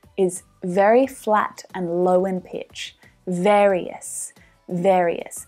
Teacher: Ver, as in air, ver, various, that final syllable, is very flat and low in pitch